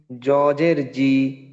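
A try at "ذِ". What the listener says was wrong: না জ নয়, ও হ্যাঁ, ওই যে জিহ্বার আগা সামনের উপরে, জিহ্বার আগা।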